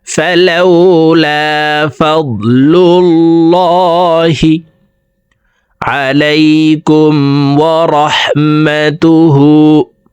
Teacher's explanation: মিম বাদি যালিক, এখান থেকে বলছি, সুম্মা তাওয়াল্লাইতুম মিন বাদি যালিক ফালাউলা ফাদলুল্লাহি। আল্লাহ শব্দের আগের হরফে পেশ আছে, এই কারণে এই লামকে ল বলে পড়ব, অর্থাৎ মোটা করে পড়তে হবে।